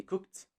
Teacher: you stay cooked that sounds terrible instead we say cooked actually even though we write cooked we just don't say the letter d we say the letter t instead